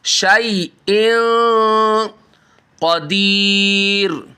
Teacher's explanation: شَيْءٍ تنوین کے بعد حروف اخفاء 15 حروف ہیں، ان میں سے یہ قوف آ رہا ہے، یہاں پر چھپا کر غنہ کریں گے، اخفاء کریں گے، ناک میں آواز لے جا کر